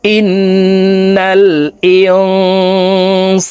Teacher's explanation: ইকফা গুন্না নুন সাকিনের পরে ইকফার হরফ সিন আসছে এই কারণে এই নুন সাকিনকে নাকের ভিতরে লুকাইয়া গুন্নার সহিত পড়বো